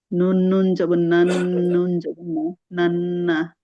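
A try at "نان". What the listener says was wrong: গুণাটা একটু বেশি সময় হবে, হ্যাঁ। একটু বেশি করে গুণাটা করতে হবে। নুন নুন জবর নান, নুন জবর না নান, না।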